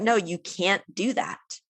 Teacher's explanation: it's actually the negative can't where we actually pronounce the a sound more fully · if you go back and listen again you don't hear the T